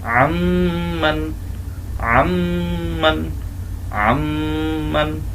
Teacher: মিম কে ধরবে এবং গুন্নাও করবে · নুন সাকিন বাদ দিয়ে আইন মিমকে ধরবে এবং গুণনাও করবে। আম্মান, আম্মান, আম্মান, এই হলো ঈদগামের হরফ।